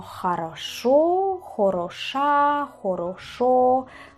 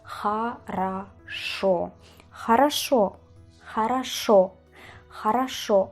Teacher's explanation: Acento en la última letra, es decir, jaraso. Y usamos a en lugar de o. Jaraso. Esta palabra es una de las que más se utilizan en el habla ruso y en el habla seguramente de vuestro idioma, que es como vale, bien. · acento en la última letra, es decir, хорошо, y usamos A en lugar de O